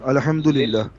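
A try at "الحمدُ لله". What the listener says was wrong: پورا پورا آخر تک، آخری حرکت کو بھی پروناؤنس کر کے دکھائیے،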